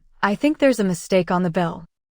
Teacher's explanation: Listen to the intonation, rising, falling on mistake, and falling on bill.